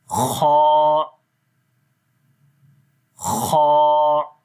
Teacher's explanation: ठीक है, तो ये हल्का सा इनके अंदर डिफरेंट जो आ रहा है ये इनकी क्वालिटीज की वजह से होता है कि खा की आवाज़ थोड़ी खुरदरी सी होती है और ये ऊपर से आती है